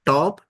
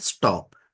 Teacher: For example, top and stop. You can see the aspirated T in top and unaspirated T in stop.